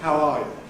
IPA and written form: hæʊ ˈɑː ju (how are you)